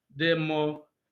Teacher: the main / primary stress of the word democratic is on the third syllable. Well, third syllable from the beginning, but second syllable from the end.